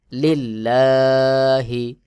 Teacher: লিল লাম খাড়া জবর লা হা জের হি লিল্লাহি এখানে দেখুন আল্লাহ শব্দের লামের আগের হরফে জের রয়েছে এটা পাতলা করে উচ্চারণ করতে হবে